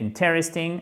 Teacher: Et là, ce qui est non pas difficile, mais interesting, intéressant, c'est cet accent tonique qui est sur la première syllabe